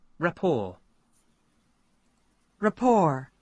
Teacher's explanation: T is not pronounced because we do have this case in French pronunciation